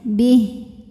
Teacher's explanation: Ha kalau berhenti walaupun barisnya panjang jadi sukun ya. Bih. Di atasnya ada tanda waqaf jaiz.